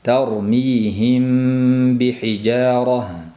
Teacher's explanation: mim b harfiga yo'liqqanda mimni, ya'ni b ning chiqadigan joyiga berkitib dimoq bilan o'qishlik ixfo shafaviydir